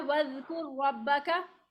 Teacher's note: रॉ का रॉ में इदगाम हो रहा है